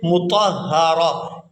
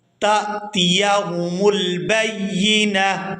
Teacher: 1 آنکھ والی تا ہا کے اندر کنورٹ ہو جائے گی اور اس کو ساکن کر کے ادا کریں گے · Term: ہا ساکن